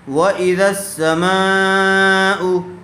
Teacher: حرف مدہ کے بعد اگر حمزہ اسی کلمے میں آ جائے تو مد متصل کا قاعدہ ہوگا اور اس کو تھوڑا زیادہ کھینچ کر پڑھیں گے